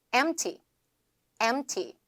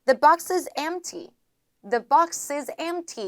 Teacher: M, 뭐 P, T 이렇게 자음이 3개 이상 겹쳐졌을 때 중간에 있는 자음은 약화되거나 탈락한다라고 보시면 되겠습니다. 그렇기 때문에 중간에 있는 거 소리 내지 않습니다.